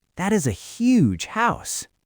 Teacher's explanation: If I see a beautiful house, I do not just say that is a huge house on a flat tone. I jump my pitch on the word huge. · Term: pitch jump